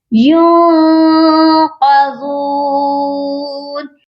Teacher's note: نون ساکن پر ہم اخفا کریں گے کیونکہ آگے قاف ہے جو کہ حروف اخفا ہے۔